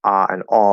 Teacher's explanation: for me, ah and aw are one sound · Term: the merger